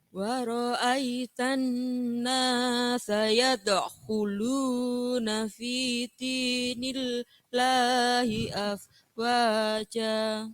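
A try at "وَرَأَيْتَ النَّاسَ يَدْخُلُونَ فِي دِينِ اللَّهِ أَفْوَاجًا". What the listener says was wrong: Ayo, masih muda kok, gak boleh nyolong nafas. Ini nggih, yade khulu, jangan yade khulu.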